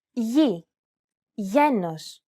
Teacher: This letter is tricky because the pronunciation changes depending on the surrounding vowels. When it precedes an I or an E vowel, it's pronounced very much like an English Y sound.